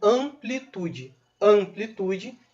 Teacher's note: Lembrando que, em alguns casos, as consoantes M e N não são consoantes, e sim indicativo que uma determinada vogal é uma vogal nasal, que é o caso de amplitude. Amplitude, esse M está ali para nasalizar a vogal A